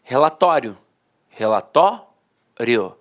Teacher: a pronúncia paroxítona terminada em ditongo falava assim ó relatório relatório a penúltima sílaba a sílaba mais forte